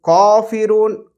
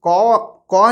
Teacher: کاف جو حرف ہے باریک ہے، تو اس کے لیے ہم باریک آواز نکال لیں گے، کاف کی موٹی آواز نہیں نکالیں گے